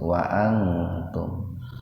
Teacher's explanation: Wa antum, ini ihfa akrob, nun mati ketemu tak dalam satu kata, jadi dibaca samar tapi sepintas saja. Wa antum, jadi nggak usah dibaca panjang dua ketukan, nggak usah wa antum, nggak usah begitu.